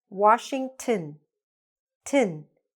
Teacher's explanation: That ON gets connected here to the T, right? And becomes shortened or reduced. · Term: schwa